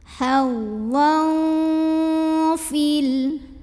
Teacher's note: Karena ada tanwin fathah bertemu dengan huruf fa. Maka cara baca tanwin fathahnya adalah samar-samar siap-siap mau bilang fa disertai dengungan. Samar dan dengungnya sama karena huruf fa ini makhrajnya tengah-tengah ya, tidak terlalu dekat juga tidak terlalu jauh dari nun. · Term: ikhfa hakiki